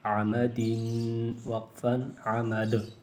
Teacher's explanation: عین زبر ع میم زبر م عم دال دو زیر دن عمد. آخر میں دو زیر ہے اور حالت وقف میں دال ساکن ہوگا تو قلقلہ کیا جائے گا